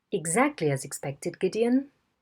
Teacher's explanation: A very early nucleus and a long tail.